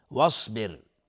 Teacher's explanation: صاد از حروف استعلاء غلیظ تلفظ میشه